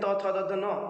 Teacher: हमारी जिह्वा जाके दांत से टकराती है, इसलिए दंत कहते हैं इसको